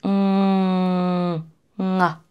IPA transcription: ŋ